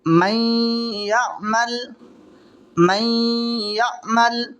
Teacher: आगे वाला देखें, मैं यअमल, मैं यअमल, ये नून साकिन है, नून साकिन के बाद में या आ रही है, तो यहाँ पर इसको मिला करके गुन्ना के साथ पढ़ेंगे और इसको इदगाम माल गुन्ना कहते हैं।